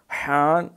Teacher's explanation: یہ گلے سے رگڑتا ہوا نکلتا ہے